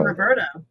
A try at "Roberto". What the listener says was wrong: Roberto. You gotta get the R in there. Roberto.